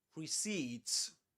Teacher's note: The accented syllable is the last one